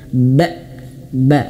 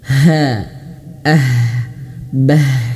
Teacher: Hamzah tertahannya suara dan ha dia mengalir nafas